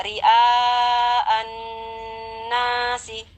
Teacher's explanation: karena nunnya bertasdid, maka kita penuhi juga gunnahnya dengan kadar gunnah yang paling sempurna, kurang lebih 3 harkat kadar gunnahnya · Dan selain itu karena di nunnya menempel alif ya, di sana hukumnya mad tabi'i. Setelah kita dengungkan selama kurang lebih 3 harkat, kita baca panjang nanya. Jadi bacaannya ria'an nasi ya.